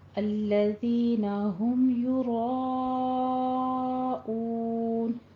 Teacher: را کو پر پڑھنا ہے